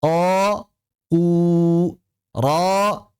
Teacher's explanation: Kenapa? Karena pangkal lidah tetap naik ketika mengucapkan domah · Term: dhammah